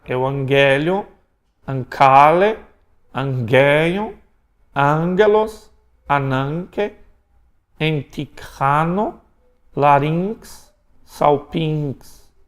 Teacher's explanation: o gama, então, antes de outro gama tem som de N. Antes de kappa tem som de N.